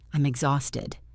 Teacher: Listen to the H being silent.